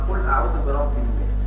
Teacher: فالسين من حروف الهمس يبقى لازم تتسمع · وقفت على السين بسكون والوقف في القران لا يكون الا بسكون